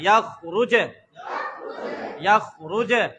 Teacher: جب جیم ساکن ہوگا تو جیم میں کیا ہوگا؟ قلقلہ.